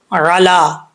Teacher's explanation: عین کو پڑھتے وقت اس چیز کا خاص خیال رکھنا ہے کہ حمزہ کا ساؤنڈ نہ آئے